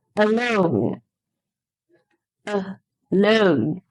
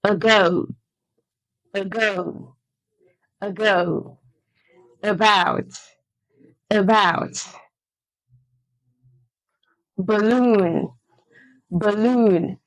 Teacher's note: the schwa sound replaces the vowel A in these words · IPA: /ə/